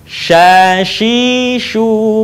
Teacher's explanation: huruf Sya keluar dengan menyentuhkan Tengah lidah kita dengan langit-langit diucapkan mengalir udaranya dan mengalir pula nafasnya bahkan ketika melafalkannya menyebar nafas dan udaranya yang disebut dengan tafasyi